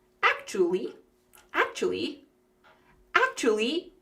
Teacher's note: when we're speaking quickly, that third syllable uh we just leave it out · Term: three or four syllables